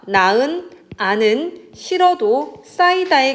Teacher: 이 경우에는 히읗은 아예 발음하지 않는다. 그래서 여기서 보니까 나은, 아는, 싫어도, 싸이다의 경우에도 보면 히읗이 다 생략이 되어버리고 나은, 그 다음에 아는 할 때 니은이 여기로 옮겨져서 아는, 싫어도 할 때 히읗은 사라지고 리을이 옮겨져서 싫어도, 싸이다, 히읗이 사라져서 싸이다 이렇게 된다라는 이야기입니다.